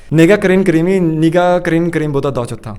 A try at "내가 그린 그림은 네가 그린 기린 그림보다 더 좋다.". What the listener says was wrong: Yeah, almost right.